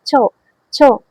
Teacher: এগুলো উচ্চারণ করার সময় হালকা বাতাস আপনার মুখ থেকে বের হচ্ছে। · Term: তালব্য ব্যঞ্জন